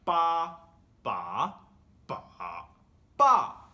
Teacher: bā first tone, bá second tone, bǎ third tone, bà fourth tone